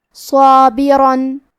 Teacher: کلمت صابرن میں صاد ہے اور اس کے بعد مد الف ہے، کیونکہ صاد حروف التفخیم میں سے ہے، لہذا ہمیں یہ دونوں حرف کو موٹی آواز میں پڑھنا ہے